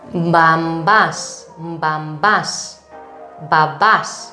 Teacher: If you're attentive enough, you can hear a slightly M sound before B.